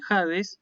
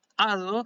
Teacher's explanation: Fíjate que esta comita así, esto se llama espíritu áspero y determina esa pronunciación con aspiración, como si fuera una J